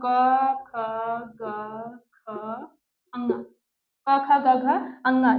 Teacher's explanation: तो पूरा क वर्ग मतलब क ख ग ख ग घ अङ ये सभी किससे बोले जाएंगे? कंठ से।